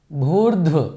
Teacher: इसमें भ भी महाप्राण है उसके बाद धा भी महाप्राण है तो उच्चारण में भी थोड़ा कठिन होता है और उसका विच्छेद · भूर्ध्व मतलब सभी महाप्राण ध्वनियाँ हैं इसमें, भ भी महाप्राण है, उसके बाद धा भी महाप्राण है।